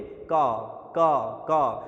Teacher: आप जब एक प्रकार से का बोला तो ऐसा लगा कि कम वायु आई। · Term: अल्प प्राण